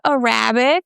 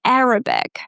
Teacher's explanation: It's not Arabic, okay? We stress the first A, Arabic.